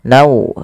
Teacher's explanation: masukkan tanwinnya kepada huruf waw, nau, kemudian ditahan dengan 2 harokat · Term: idgham bi gunnah